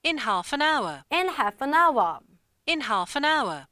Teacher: 이거는 영국이든 미국이든 L 소리가 묵음 처리가 됩니다. 무조건 half라고 소리 내주셔야 돼요.